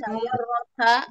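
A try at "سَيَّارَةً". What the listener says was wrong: Sayyarotan. Ya, pakai tanwin ya. Sayyarotan. Ihda asyrota sayyarotan.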